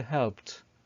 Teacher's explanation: هنا فال ed بعد p sound اتنطق t sound. So don't say helped, say helped.